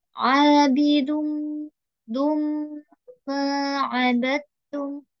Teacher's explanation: tanwin bertemu dengan huruf mem maka didengungkan